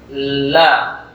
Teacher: Sepanjang sisi lisan ini digusi gigi di atas. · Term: huruf lam